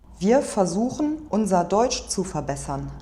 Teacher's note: She's replacing the trill with the vowel.